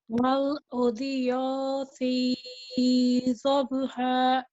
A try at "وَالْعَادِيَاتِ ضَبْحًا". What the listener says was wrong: Once more, pronounce the ain from the middle of your throat. وَالْعَادِيَاتِ ضَبْحًا. وَالْعَادِيَاتِ ضَبْحًا.